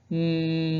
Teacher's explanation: m like you're humming a song look how my lips are together